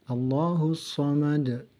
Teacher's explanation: Dal dipantulkan. Qalqalah kubra kerana di akhir kalimat, akhir ayat.